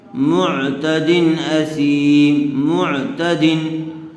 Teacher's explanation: تنوین کے بعد حروف حلقی میں سے حمزہ آیا ہوا ہے، اس لیے بغیر غننے کے جلد اظہار کر کے پڑھیں گے